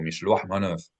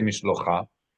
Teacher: Because a het at the end of the word flips with the vowel.